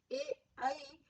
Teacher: कंठ तालव्य ए ऐ जो वर्ण है, इनमें कंठ और तालु दोनों प्रदेशों का इस्तेमाल होता है, इसलिए ए ऐ को कंठ तालव्य कहा जाता है।